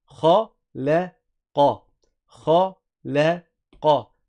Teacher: le kha qui est grave, le lem qui ne l'est pas, et le qaf qui est grave avec sa qalqala aussi. Donc on laisse rebondir.